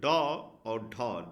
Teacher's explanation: के उच्चारण में जिहा ऊपर उठकर मुर्धा को स्पर्श करती है माने जीहा मुड़ जाती है और ऊपर मुर्धा को स्पर्श करती है फिर तुरंत नीचे गिर जाती है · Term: उत्क्षिप्त